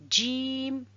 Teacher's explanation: la lettre jim sort du milieu de la langue